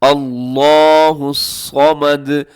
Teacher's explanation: صاد کو موٹا پڑھنا ہے، اس کو باریک نہیں کرنا